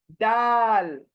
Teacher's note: दाल, जबान को सामने के दांतों की जड़ को लगा दो और जबान को खूब चौड़ी कर दो, स्प्रेड कर दो, दाल।